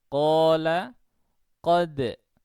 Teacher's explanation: Untuk madhab yang pertama, yakni madhab Ibnu At-Tahhan, ini kita dapati tingkatan pertama, maksudnya adalah bacaan tebal yang paling tebal, tingkatan tertinggi itu adalah huruf yang berfathah. Contohnya adalah qala, qad.